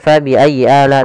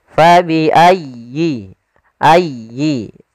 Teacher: sempurnakan di tasydid huruf ya